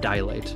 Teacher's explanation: might sound like it has three syllables, it's correctly pronounced 'dai-layt'. Remember, no extra 'a'.